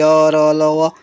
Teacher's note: अंतस्थ व्यंजन जिनका उच्चारण जीभ तालु, दांत, होठ के परस्पर सटने से होता है। पर पूर्ण स्पर्श नहीं हो पाता है। उन्हें अंतस्थ व्यंजन कहते हैं।